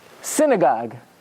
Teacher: Milo means you emphasize the beginning the first syllable